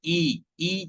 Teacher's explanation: ई जैसे ही बोल रहे हैं तो जिह्वा का मध्य भाग ऊपर की तरफ जा रहा है। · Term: तालव्य